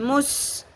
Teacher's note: سیٹی کی آواز آنی چاہیے اور باریک ہوگا سین کو پر نہیں کرنا